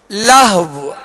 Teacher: آخر میں ہونٹ گول کر کے واو پر آواز اور سانس توڑ دیں گے، واو کو ساکن کرتے ہوئے.